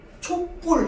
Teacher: 초와 불이 만나서 촛불 이러면서 뒤에 불을 뿔로 발음해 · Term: 된 소리